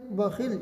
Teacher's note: یہاں پر لام میں ہم آواز کو لوٹائیں گے نہیں، اس لیے کہ یہ حروف قلقلہ نہیں ہے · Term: وقف بالاسکان